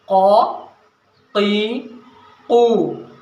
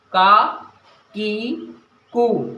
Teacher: قاف جو ہے یہ موٹا پڑھا جاتا ہے، منہ بھر کے پڑھا جاتا ہے، اور کاف جو ہے یہ ہلکی آواز سے پڑھا جاتا ہے